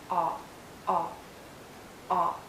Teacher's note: It's a short sound and a very open and rounded sound. Make your lips rounded and lower your jaw, aw, aw, aw.